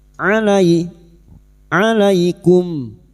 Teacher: Fathah bertemu ya sukun. Kita lunakkan huruf lin